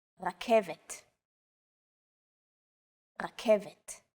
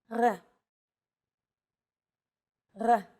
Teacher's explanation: This letter is pronounced differently than an English R. It's pronounced at the back of the throat instead of forward in the mouth.